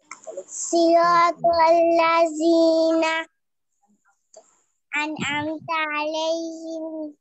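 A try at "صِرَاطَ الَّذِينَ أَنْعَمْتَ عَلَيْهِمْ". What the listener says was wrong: এক শ্বাসে পড়তে হবে, একটু শ্বাস নিয়ে এক শ্বাসে এক দমে পড়বেন সিরাতাল্লাযিনা থেকে আলাইহিম পর্যন্ত।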